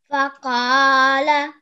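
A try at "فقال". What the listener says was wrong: Then at the end, in the last word, we have the letter ayn, which you missed out of the pronunciation.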